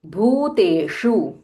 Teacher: भ इस महाप्राणा एंड दीर्घा